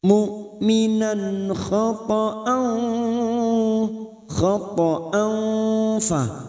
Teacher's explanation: Mu'minan khata'an fa fathah tanwin pada hamzah fathah tanwin pada huruf hamzah yang bertemu fa ikfa hakiki. Fa kita samarkan kita dengungkan 2 atau 3 harokat dan siap membunyikan huruf depannya yaitu huruf fa.